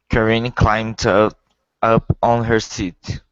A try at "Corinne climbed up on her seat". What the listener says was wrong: Okay, good job.